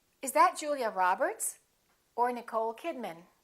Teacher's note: remember the final name gets the most stress